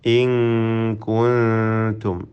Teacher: വീണ്ടും ഫതമന്നൗ, അവിടെയും നൂൻ മുഷദ്ദദ മണിച്ചുകൊണ്ട് ഉച്ചരിക്കണം. ഇൻ കുൻതും, രണ്ട് സാക്കിനായ നൂനും ഇഖ്ഫ ഹഖീഖി നൽകി അവ്യക്തമാക്കി മണിച്ചുകൊണ്ട് ഉച്ചരിക്കണം. കുൻതും എന്ന സാക്കിനായ മീം ഇൽഹാർ ഷഫവി നൽകി മണിക്കാതെ വെളിവാക്കണം.